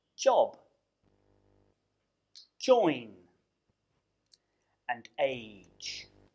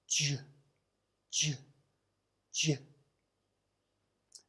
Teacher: it is Voiced which means that you vibrate your vocal chords to make the sound. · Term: Voiced palato-alveolar affricate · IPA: /ʤ/